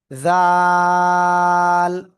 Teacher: জিহ্বার আগা সামনের উপরে দুই দাঁতের আগায় লাগিয়ে একটু নরম আওয়াজে উচ্চারণ করবেন।